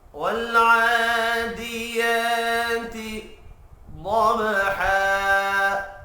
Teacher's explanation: والعادیات ضبحا، ضاد پر پڑھیں گے، با ساکن پر قلقلہ ہوگا۔ وف کی صورت میں 2 زبر ایک زبر میں تبدیل ہو کر الف مدہ پڑھا جائے گا۔